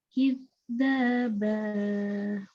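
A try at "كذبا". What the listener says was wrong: Ini masih terlalu tegas lagi. Harusnya nyambung tuh. Masih berhenti. Harus nyambung suaranya. Suaranya tersambung. Itulah salah satu sifat rokoah. Jadi nggak basa, nggak begitu, tapi basa.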